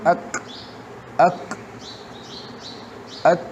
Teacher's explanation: خو څه قدرې همس په وجه د بندېدو نه پس سلک شانتي سا هم جاری شي